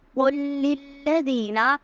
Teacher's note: قل کا جو قاف ہے اس کی آواز حلق سے ادا ہوگی